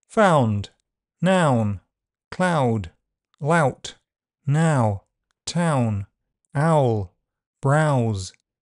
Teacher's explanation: The first part of the def thong is unrounded. Ah, and the second part can be slightly rounded u or unrounded. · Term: diphthong vowel sound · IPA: /aʊ/